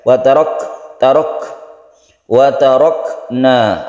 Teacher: Kaf ini ada salah satu sifatnya itu hames. Dia bukan kol-kolah, bukan pula dia itu hanya biasa saja.